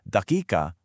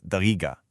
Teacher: the classical Arabic qaf sound often shifts to a guf or g sound. So, the word for minute, daqiqa, becomes dagiga.